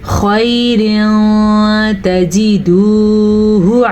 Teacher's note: ये वाव मद्दा है, हा को लंबा नहीं करेंगे, हा पे पेश है